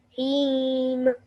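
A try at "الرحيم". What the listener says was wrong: Okay, so what you're doing is when you're making the meme sound, you're opening your lips again. Don't. Just close your lips and stop the air. Nirrahim.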